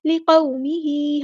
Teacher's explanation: واو ساکن سے پہلے زبر ہے تو مد لین اور ہی نرمی سے موڑنا ہے